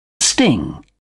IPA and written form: stɪŋ (sting)